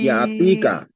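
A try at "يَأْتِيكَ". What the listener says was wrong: তীরে টান দিচ্ছেন না। ইয়া আতিকা।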